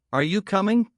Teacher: my voice rises at the end. It tells the listener I am asking not telling.